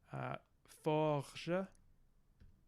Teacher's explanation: we take our our nice coronal trill and we turn into a uvular